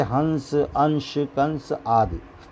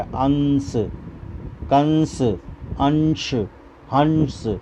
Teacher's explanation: ध्यान रहे कि अनुसार का उच्चारण केवल नाक से किया जाता है